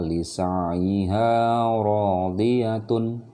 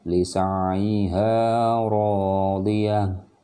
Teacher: Dimana teman-teman mau berhenti dan di situ ada tanwin, jadi suaranya itu tanwinnya dihilangkan dan kita lihat suara akhirnya. Kalau dia tamarbutoh, Dia yang keluar adalah suara ha besar.